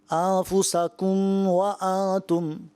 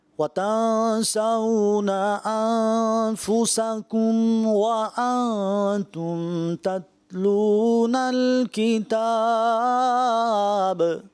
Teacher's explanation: تو یہ اظہار شفوی ہے, یہاں غنہ نہیں ہوگا